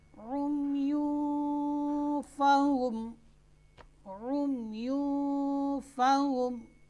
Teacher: देखिए यहाँ पर नून साकिन और नून तनवीन के बाद, यहाँ पर नून तनवीन के बाद हुरूफ इख्फा 15 है, उनमें से फ़ा आ रही है, तो नून साकिन या नून तनवीन, यहाँ पर नून तनवीन है तो उसमें गुन्ना होगा ऐसे कि नून साकिन और नून तनवीन को उसके मखरज से पहले अदा करेंगे और आवाज़ नाक में जाएगी।